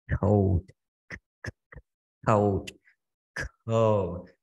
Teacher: nó sẽ không rung ở khúc đầu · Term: vô thanh